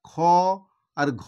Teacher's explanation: উচ্চারণ করার সময় আমাদের একটু বেশি শ্বাসবায়ু খরচা হয়। তো বেশি শ্বাসবায়ু খরচা হয় বলে সেই জন্য এই বর্ণগুলোকে বলা হয়, কি বলা হয় না, মহাপ্রাণ ধ্বনি।